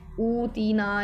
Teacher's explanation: इसमें हरूफ़ मद्दा तो हैं लेकिन मद का सबब नहीं है, तो इसको जो है वो हम एक अलिफ़ के बराबर लंबा करेंगे। और माहिर तजवीद के नज़दीक बंद उंगली को ना बहुत आहिस्ता और ना बहुत जल्दी खोलने या इसी तरह खुली हुई उंगली को बंद करने में जिस कदर देर लगती है, ये एक अलिफ़ का अंदाज़ा है। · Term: मद असली